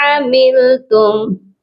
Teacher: ثم لتنبؤن بما عملتم، عین کی آواز حلق کے درمیان والے حصے سے آئے گی